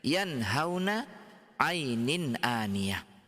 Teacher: Jadi semuanya ketika ada kita mendapatkan nun sukun atau tanwin yang bertemu dengan salah satu daripada huruf-huruf tenggorokan ini, maka bunyinya nunnya tetap dibaca nun tanpa ditambah dengung.